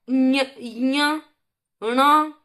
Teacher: साथ में इसमें नासिका से भी देखिए उच्चारण हो रहा है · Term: पंचमाक्षर